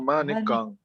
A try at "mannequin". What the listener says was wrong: Mannequin. Un peu plus haut, aigu. Mannequin. Quin, mannequin.